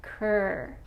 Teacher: The tip of the tongue is pointing towards the roof of the mouth, much more than in English. The R is more towards the front of the mouth. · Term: Ker sound